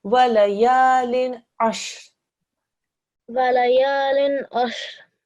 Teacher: the next letter is an ayn. And that's why you just do lin. You don't do any sort of nasalization sound